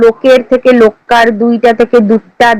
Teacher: আদিতে শাসাঘাতের ফলে পদমধ্যস্বরের লোপ ও ব্যঞ্জনদ্বিত্ব পরিলক্ষিত হয়